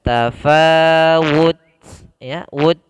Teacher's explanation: ketika kita matikan ada sedikit suara yang kita keluarkan. Tafawud, ya, wud, karena sifat yang yang ada pada huruf ta itu sifat hamas.